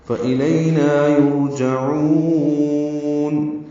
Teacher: یرجعون را پر پڑھیں گے، جیم پر زبر جلدی سے پڑھیں گے، عین وسط حلق سے ادا کریں گے اور لمبا کریں گے. وقف المد حاضر السکون ہے.